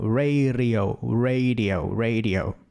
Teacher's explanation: Essa tremidinha na ponta da língua.